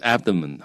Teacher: abdomen is now stressed on the first syllable but a long time ago it was stressed on the second